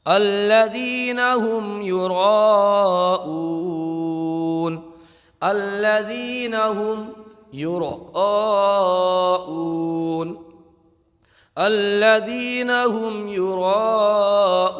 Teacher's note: یہاں پر حروف مدہ کے بعد حمزہ اسی کلمے میں، تو یہاں پر مد متصل ہوگا، مد متصل 2.5 الف کے برابر کھینچ کر پڑھا جاتا ہے،